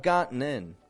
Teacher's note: If I say the word gotten, that T's disappearing altogether